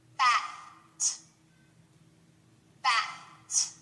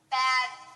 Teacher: put your hand on your throat you shouldn't hear a vibration at the end